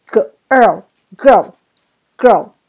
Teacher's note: 所以记住▁IR▁就要念卷舌的▁R▁的音，它是在重音的部分